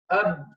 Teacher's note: the non-flowing of the sound when you pronounce the letter, because the makhraj is closed. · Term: shiddah